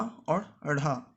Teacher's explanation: जीभ झटके से मूर्धा को स्पर्श कर नीचे आती है, तो इनको उत्क्षिप्त कहते हैं।